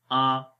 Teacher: ज़बर मुंह खोल कर पढ़ी जाती है और झटका भी नहीं देंगे और लंबा भी नहीं करेंगे